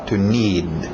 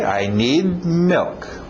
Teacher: Engole aquele D no final.